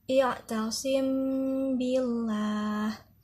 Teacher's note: hukum bacaannya dinamakan dengan Ikhfa Syafawi cara membacanya samar-samar dan didengungkan